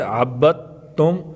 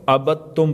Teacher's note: با کو تا کے ساتھ ملائیں گے، دال ساکن کو چھوڑ دیں گے تو عبدتم کو عبدتم پڑھیں گے۔